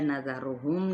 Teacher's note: نذرہم زال نرمی کے ساتھ، را پیش کی وجہ سے موٹا